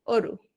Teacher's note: ঠোঁটগুলো ও এর মতো গোলাকার আকৃতি ধারণ করে, সেক্ষেত্রে অ এর উচ্চারণ হবে সংবৃত